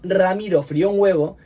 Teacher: en frío tenemos un diptongo, hay juntas una vocal cerrada y una vocal abierta, y una vocal cerrada y una vocal abierta forman siempre un diptongo, excepto cuando la vocal cerrada es tónica.